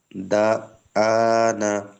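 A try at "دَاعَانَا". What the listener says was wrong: দা না, দুটোই টান হবে। আইন আলিফ জবর আ, নুন আলিফ জবর না। দুটোই হরফে মাদ্দা আছে।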